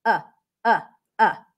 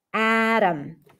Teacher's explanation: it sounds just like the O is reduced to uh or like you are skipping the vowel Al together